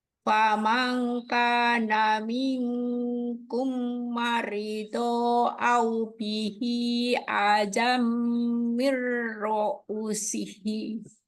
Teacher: Nun ketemu kaf, ikhfa hakiki berarti kita wajib baca dengung. Nun Ya, ketemu kaf lagi sama mim ketemu mim, idgham mimi dengung lagi.